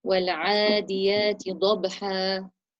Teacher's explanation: Pronounce the ain from the middle of your throat, a bit sharper than you did. والعاد, the makhraj of the ain is the middle of the throat and it has to have a sharp sound